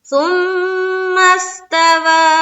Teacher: ثم میں مشدد کا غنہ